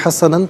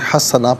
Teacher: اسے حسناً پڑھیں گے، وقف کی صورت میں حسنا پڑھا جائے گا کہ 2 زبر کی تنوین وقف میں الف سے چینج ہو جاتی ہے